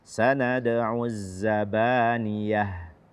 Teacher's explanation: membaca ya pada zabaniyah ini jangan sampai kita ikutkan rongga hidung.